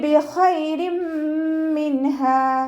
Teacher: തെൻവീനിലുള്ള നൂനിൻ്റെ സൗണ്ടിനെ മീമിലേക്ക് ലയിപ്പിച്ച് ഉന്നയോടുകൂടി ഒതുക്കി കൊടുക്കുക. ലയിപ്പിക്കുകയും ചെയ്യുക, അതോടൊപ്പം തന്നെ ഉന്ന കൊടുക്കുകയും ചെയ്യുക, നന്നായി മണിക്കുകയും ചെയ്യുക കേട്ടോ. · ഖ ഇസ്തിഅലാൻ്റെ ലെറ്ററാണ്, ഉയർത്തി ഉച്ചരിക്കേണ്ട അക്ഷരങ്ങളിൽപ്പെട്ടതാണ്. നമ്മുടെ നാവിൻ്റെ ബാക്ക് നന്നായി മുകളിലേക്ക് ഉയർത്തിയിട്ട് ഉച്ചരിക്കുക കേട്ടോ. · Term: ഇദ്ഗാം ബിഗുന്ന